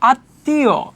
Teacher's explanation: কিন্তু শব্দের মধ্যে যখন মফলা যুক্ত হবে যেই বর্ণটার সাথে যুক্ত হবে ওই বর্ণটা নিয়ে দুইবার উচ্চারণ হবে। মফলার কোন উচ্চারণ হবে না। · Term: বর্ণের দিত